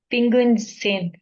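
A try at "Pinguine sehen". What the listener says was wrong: जेन, ठीक है, सेन नहीं कहना है इसको,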